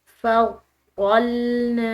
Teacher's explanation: نون کو ہم نے لمبا ادا کیا الف مدہ کی وجہ سے